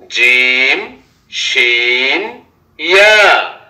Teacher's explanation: 6 নম্বর মাখরাজ, জিহ্বার মধ্যখান তার বরাবর উপরের তালুর সঙ্গে লাগাইয়া জিম শিন ইয়া